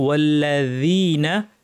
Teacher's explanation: জাল জিহ্বার কিনারা দাঁতের কিনারায় লাগিয়ে সুন্দর করে বলতে হবে